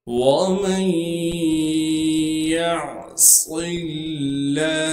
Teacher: یا کو عین سے ملائیں گے کیونکہ عین ساکن ہے۔ صاد کو موٹا کر کے پڑھیں گے کیونکہ صاد موٹے حروف میں سے ہے اور صاد میں سیٹی ادا کی جائے گی۔ صاد کو آگے لفظ اللہ کے لام سے ملا دیں گے۔ · میم کو یا سے ملا دیں گے۔ ادغام کے قاعدے سے نون کو ہم ختم کر دیں گے۔ نون ساکن کے بعد حروف یرملون میں سے یا آ گئی ہے، لہٰذا اب اس نون کو ہم یا میں چھپا دیں گے۔ · میم کو یا سے ملائیں گے غنہ کے ساتھ۔